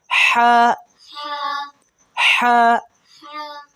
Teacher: ہا حلق سے ادا ہوگا اور ذرا سی سیٹی بھی نکلے ہا کی